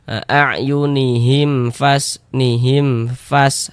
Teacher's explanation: Karena dia izhar maka dibaca jelas dan tidak berdenggung. Baca pendek saja. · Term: izhar syafawi